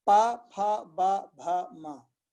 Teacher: तो ये पा कहां से निकलेगा? इनमें दोनों ओष्ठ का प्रयोग होगा, ऊपर और नीचे की ओष्ठ। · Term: पवर्ग